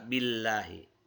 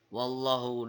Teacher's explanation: kemudian setelah lafal Allah ada tanda baca dhomah di huruf hanya maka dibaca tafkhim yaitu dibaca tebal